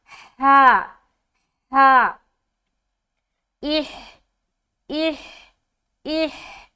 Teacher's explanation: ہا جب اس حرف کو ادا کرتے ہیں، حلق سے ایک ہوا کی سی پہلے نکلتی ہے، پھر یہ حرف ادا ہوتا ہے